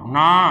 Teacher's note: அடுத்து பாருங்க, இந்த நா அப்படின்னா நாவின் நுனிப்பகுதி மேல்வாய் பல்லின் அடிப்பகுதி தொடுதல், உள்ள போய் தொடணுமாமா நா அப்படின்னு சொல்லணும்.